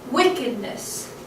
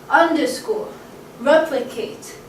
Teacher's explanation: Stressed, unstressed, unstressed. Stressed, unstressed, unstressed. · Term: dactyl